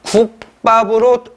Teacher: 무성음과 무성음이 만나서 무엇으로? 자, 경음으로 국밥으로 실현이 되죠.